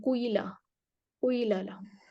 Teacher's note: تو کیلا پر ہشام، کسائی اور رویس کا اشمام ہوتا ہے. قاف کی کسرہ میں وہ ضمہ کا اشمام دے کر پڑھتے ہیں